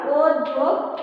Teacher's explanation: এখানে আদ্য ধ্বনির নিয়মে অ ধ্বনিটা হয়ে গেছে কি ও ধ্বনি